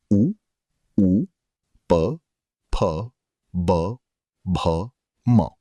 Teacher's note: जो वर्ण दोनों होठों के स्पर्श से बोले जाते हैं उन्हें ओष्ठय वर्ण कहते हैं।